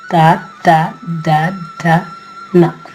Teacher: దంతాలకు నొక్కి పెట్టి నాలుగుని పలుకుతాం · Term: దంత్యములు